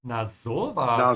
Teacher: The emphasis needs to be on the O. Stretch the O.